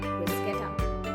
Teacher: it's bruschetta with a hard CS sound